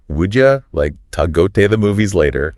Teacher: would you becomes would ya, to is like ta, and the like disappears before movies.